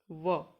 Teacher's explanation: तो यह बोला जाता है दंत और ओट को मिला के · वकारस्य दंतोड्य, तो वकार व किससे बोला जाता है? तो ये बोला जाता है दंत और ओष्ठ को मिला के व, तो इसको बोला जाएगा दंत ओष्ठ।